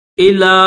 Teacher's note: لام کو تھوڑا سا کھینچیں گے، اس کے اوپر چھوٹی مد بھی ہے اور کھڑا زبر بھی ہے تو تھوڑا سا زیادہ کھینچیں گے